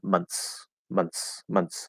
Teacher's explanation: With months, if there's an n plus ths, what will commonly happen is we're going to go into that n, and then the th is going to become a t, and then we're going to push out the s.